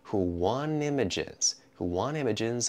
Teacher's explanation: we're going to take out that t after the N before a vowel